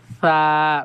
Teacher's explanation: নরম করে জিহ্বার আগা এবং দাঁতের আগা দিয়ে উচ্চারণ হচ্ছে